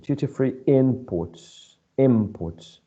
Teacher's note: this word is stressed on the first syllable because in that way it's acting as a noun